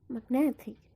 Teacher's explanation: The stress is in the syllable net.